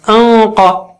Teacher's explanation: قاف اونچا ہے تو نون ساکینہ بھی اونچا ہو جائے گا